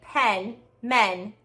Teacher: the vowel is not being nasalized